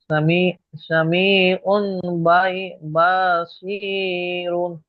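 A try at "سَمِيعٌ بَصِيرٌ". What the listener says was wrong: বাটা টান হয়ে গেল। বাসির। টান টান দিয়ে পড়েন, সিন জবর সা। সামি। বা জবর বা, জুড়েন, বা জবর বা, সামি বা।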